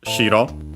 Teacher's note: accent on the first syllable and that means white